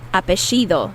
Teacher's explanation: in some countries like argentina where i'm from they they produ they pronounce those double l's as sh sound